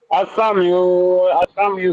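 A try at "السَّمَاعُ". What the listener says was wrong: সাম ইউ না তো বেটা, এই সাম ইউ না, সাম উ।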